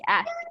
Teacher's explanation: So the letter T is an explosive sound in asked.